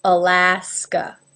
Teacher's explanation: Again, there's 3 A's, and the middle one has the A as in bat, and the other 2 are schwa.